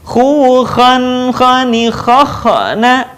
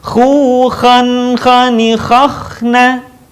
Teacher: perhatikan ketika dalam posisi sukun, suara tidak boleh mantul. Contoh yang salah, khu, khan, khani, khakhna.